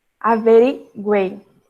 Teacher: esse som do U e do I é bem mais fraco, formando duas semivogais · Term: tritongo